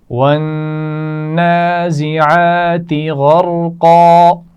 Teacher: نون پر غنہ ہے، عین کے مخرج کو واضح کرتے ہوئے پڑھنا ہے. غرقا 3 آوازیں ہیں اس لفظ میں اور تینوں موٹی ہیں.